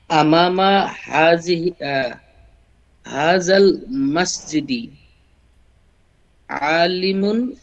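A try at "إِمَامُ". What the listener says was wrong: আমামা কেন হবে? আমামা কেন হবে? হামজা কি উপরে নাকি নিচে? একটু খেয়াল করে দেখুন তো। ইমামা হয় কখনো?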